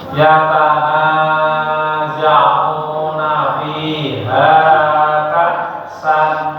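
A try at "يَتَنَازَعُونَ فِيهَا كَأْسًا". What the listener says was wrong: Ya, yatana 2 harokat aja, jangan terlalu panjang-panjang. Yatanaza'una fiha ka'san.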